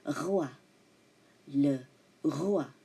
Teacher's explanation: The R is French, okay? Not the rolling R, but the R comes from the throat.